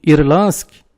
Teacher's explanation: Em Irlansk, temos a sequência NDS, não se pronuncia D